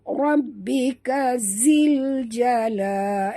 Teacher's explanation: Alif lam qamariyah atau izhar qamari. Bacaannya jelas bunyi lam itu tanpa dibalikkan atau dilantunkan ya